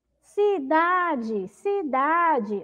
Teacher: sílaba mais forte é o da